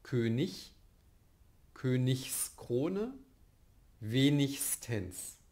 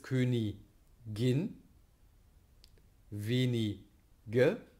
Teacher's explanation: bei der Endung IG, ist das G in der Coda, wird es spirantisiert, wird es zum Frikativ